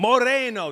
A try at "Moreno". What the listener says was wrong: Moreno. You gotta roll the R. Moreno. Gotta roll.